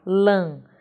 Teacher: Veja a palavra lâmpada, 3 sílabas em que nós temos aí a última sílaba lã, ela é a nossa sílaba forte, porém ela tem um som nasal, lã. Nesse caso, ela vai receber uma acentuação, acento circunflexo, ok?